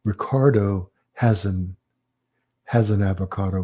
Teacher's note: you're going to hear that linkage between the verb and the article that follows it